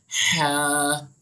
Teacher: हा जो है वो दरमियानी हल्क से अदा होता है